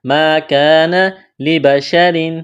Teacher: را کے نیچے دو زیر تنوین ہے تو را کو باریک کرنا ہے